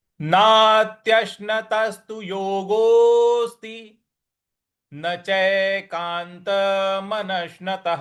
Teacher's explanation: नश्न, यहाँ पर हमको आघात देना है। और त के बाद जो विसर्ग है उसमें ह का उच्चारण लाना है। तो यह पूरा कैसे बन रहा है।